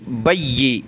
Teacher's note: या पर ये तशदीद है, इस वजह से इसको सख्त करेंगे